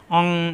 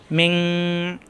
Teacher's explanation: নুন সাকিনের পরে আছে শিন ইকফার হরফ অনুস্বরের মত গুণ্য হবে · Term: গুন্না